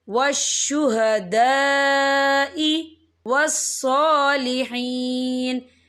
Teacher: یہ مد جو ہے مد متصل ہے، اس کی مقدار 4 حرکت کے برابر ہے، تو ہم اسے 4 حرکت کے برابر کھینچ کے پڑھیں گے